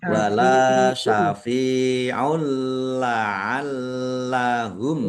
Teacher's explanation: Masuk dengan tidak mendengung. Langsung masuk ke huruf lam, tanwinnya tidak dibaca, tetapi tidak mendengung. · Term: idgham bila gunnah